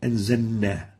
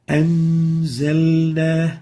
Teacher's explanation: So the lam should be clear and obvious. It should never be merged or mudgham. So avoid merging the lam into the following letter. · we practically eliminate the lam and directly pronounce the za followed by the noon.